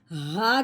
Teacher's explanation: ہاں جی آگے دیکھیں، یہ ہا ہے، دو آنکھوں والی ہا، موٹی ہا جو حلق کی گہرائی سے نکلتی ہے، ہا کر کے، ٹھیک ہے۔